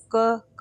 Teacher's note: क देखिए आपका कंठ से निकल रहा है